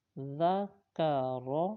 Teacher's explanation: یہ جو حرف ہے اس میں سیٹی کی آواز نہیں ہوگی، ذکر ایسے نہیں پڑھنا بلکہ زبان کا سرا اور اوپر کے دانتوں کے اندرونی کنارے سے یہ حرف ادا ہوتا ہے۔